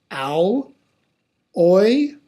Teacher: starts with that aw and then ends with the I.